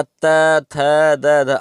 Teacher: आप खुद दोस्तों अगर इसका उच्चारण करेंगे तो आप खुद देखेंगे कि आपकी जीभ जो है ऊपर के दांतों पर लगती है, ठीक है, या स्पर्श करती है। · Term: दंत वर्ण